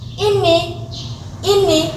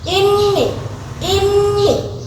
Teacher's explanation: berarti tidak ada tasjid tidak ada dengung